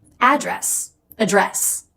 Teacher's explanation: Now, as a verb, how do we address this issue? It's always address with second syllable stress.